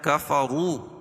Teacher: را کے اوپر پیش ہے تو را کو پر پڑھیں گے